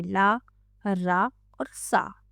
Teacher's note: जीवा का अगला भाग ऊपर के मसूड़ों को स्पर्श करता है, वत्स्य व्यंजन कहलाते हैं।